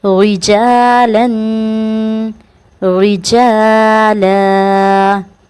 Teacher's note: را کے نیچے زیر ہے تو اسے رجالاً پڑھیں گے، ٹھیک ہے، ری موٹا نہیں کریں گے